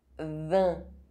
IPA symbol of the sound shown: ɛ̃